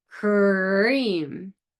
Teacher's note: Okay, you're getting ready to say cream. The lips are retracted, the tongue is tensed and pulled back.